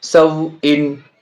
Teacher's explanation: سین وا زبر سو، واو ساکن سے پہلے زبر ہے، واولین ہے، واولین کو نرم آواز کے ساتھ جلدی پڑھیں گے. حمزہ 2 زیرین، حمزہ کے نیچے 2 زیر تنوین ہے، سو ان.